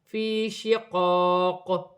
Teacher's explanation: وف کی صورت میں قاف پر قلقلہ پیدا ہوگا